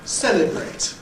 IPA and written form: ˈseləbreɪt (celebrate)